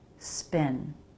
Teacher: very light separation of the lips. Not a B, spin, but a very light P.